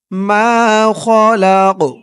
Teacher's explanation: কফের উপরে জবরটা যখন সাকিন হয়ে গেছে তখন এই কফটা কলকলার হরফ হয়ে গেছে ধাক্কা দিয়ে পড়তে হবে